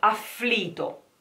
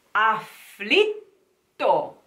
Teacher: No, you have to keep the tongue on the palate as if you were pronouncing it, but you are not pronouncing it. You are keeping silence for a while, and this gives the very sound of the double T. Otherwise it would sound afflito, which is horrible.